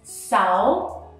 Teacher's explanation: that means you have to lower your voice and then raise it high again